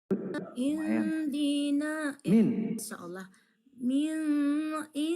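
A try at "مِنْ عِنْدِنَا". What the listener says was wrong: ya, min ini ain yang menyambung, jelaskan saja minnya tanpa mendengok. Min jangan didengok. Ditahannya lama-lama, Kalau ditahan lama-lama itu namanya dengok. Min aja itu tak dengok. Kalau nun sukun bertemu dengan salah satu huruf yang 7, nunnya dibaca jelas tanpa berdengung. Hukumnya izhar.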